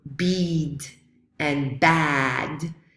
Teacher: we can call it low because the tongue is low so E is a high or closed vowel and aa is a low or open vowel